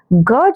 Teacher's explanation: ग जो होता है यह आपका कंठ होता है